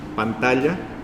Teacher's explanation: lo que puse debajo de la n para decir que es una n que se pronuncia contra los dientes no podría haber sido una n que se pronuncia más atrás